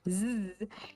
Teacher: when you make the Z noise your vocal folds are vibrating and you can could feel it if you place your hand on your nck